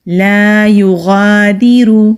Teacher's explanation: غین مستعلیہ حروف میں سے ہے، یعنی کہ موٹے حروف میں سے ہے تو موٹا پڑھیں گے۔ جو حلق کا منہ کی طرف والا حصہ ہے وہاں سے غین ادا ہوتا ہے۔